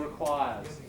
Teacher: put your finger there and hold that last sound requires it's voiced isn't it